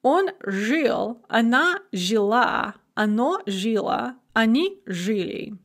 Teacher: Some verbs have a stress shift onto the feminine ending, so they will be stem stressed in all the other forms and end stressed in the feminine. And this is most common in single syllable verbs.